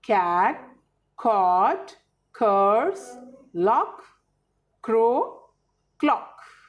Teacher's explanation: जब ख बोलते हैं, ख नहीं, ख, ख के साथ थोड़ी सी ह की साउंड आ रही है